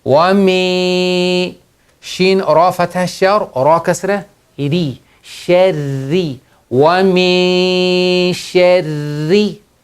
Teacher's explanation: The rule is ikhfa, hiding the sound of noon into the nose with ghunna.